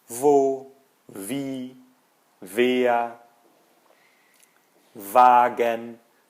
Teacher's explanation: Se o V tem som de F, o W vai assumir o som do V